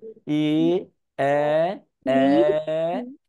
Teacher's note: মুখের অবস্থা চিকন থেকে হতে হতে বড় হয়।